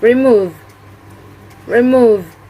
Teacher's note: the stress is located on the second syllable